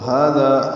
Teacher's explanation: ہا اور ذال دونوں کو دو حرکات لمبا کریں گے. ہا قائم مقام مد اصلی، ذا الف مد اصلی، ذال نرمی سے ادا ہوا.